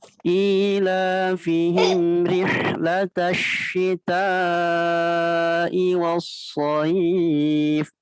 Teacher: rihlatash masih sama pakai shin ya, bukan pakai sa